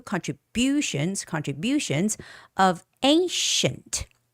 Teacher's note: Contribution. The stress goes on U.